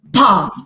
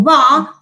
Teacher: Okay, so the only difference between these sounds, okay, because they are both plosive and they are both bilabial, is that pa, if you can produce it, is produced without any let's say involvement of the vocal folds